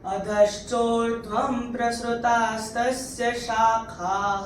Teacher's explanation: अनुस्वार के बाद प आ रहा है तो अनुस्वार का उच्चारण होगा म